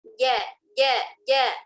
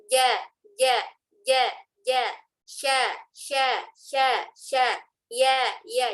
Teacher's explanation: Jim, shin, dan ya tengah lidah. Berarti bagian tengah lidah. Nempel ke tengah langit-langit atas.